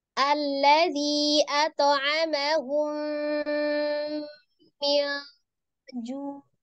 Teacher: Ya, di situ ada mim sukun bertemu dengan huruf mim ya ditandai ada tasdid. Maka mim yang pertama itu dianggap tidak ada jadi langsung masukkan ke dalam mim bertasdid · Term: idgham safawi